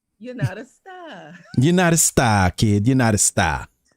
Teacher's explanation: so take any ar word and just say ah